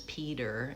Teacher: in American English your name is Peter, and you use more of a D sound